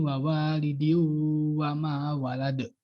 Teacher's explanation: dibacanya itu langsung ke memantulnya, nggak ada panjang pendek kayak dua ketukan atau satu alif gitu